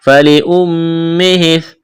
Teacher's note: میم مشدد ہے، آواز ناک میں چھپائیں گے